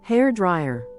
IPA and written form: ˈhɛr ˌdraɪər (Hair dryer)